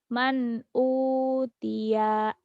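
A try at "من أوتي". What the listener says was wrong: kayak lagi kesel man utiya gitu ya.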